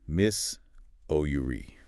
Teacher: >> Generally the middle s is pronounced like a z sound. Three syllables. Stress on the second. Miss ouri. >> Miss ouri with a z sound.